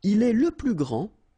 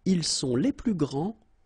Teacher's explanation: grand, so you don't pronounce the final D, will be exactly the same as the plural form for the masculine, grand.